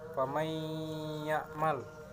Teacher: Idgham bi gunnah dibaca dengan dengung sepanjang 2-3 harakat.